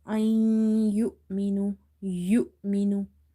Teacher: you will do the merging, which is called idgham, as well as nasalization. So this merging plus ghunna is called idgham here, idgham with ghunna.